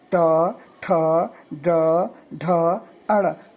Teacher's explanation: तो ट वर्ग के उच्चारणों को जब हम करते हैं ट, ठ, ड, ढ, अड़, तो हमारी जीभ मूर्धा को टच करती है, इसलिए इसका उच्चारण स्थान मूर्धा हुआ।